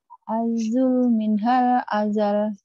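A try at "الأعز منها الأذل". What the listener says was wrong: Jangan minhal.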